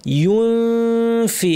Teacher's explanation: ইউ বলার সময় ঠোঁট গোল হবে, কিন্তু ইউন যখন আমরা বলবো তখন আবার ঠোঁট স্বাভাবিক।